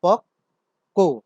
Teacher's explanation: বয়ের কারণে, বফলার কারণে আগের ক ধ্বনিটি দ্বিত্ব হয়েছে।